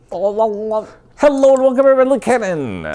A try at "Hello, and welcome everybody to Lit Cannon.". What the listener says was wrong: Still too fast. Just bring it down.